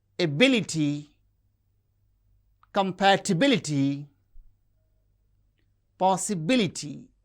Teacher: And words that end with the suffix ty that are stress on the antepenultimate syllable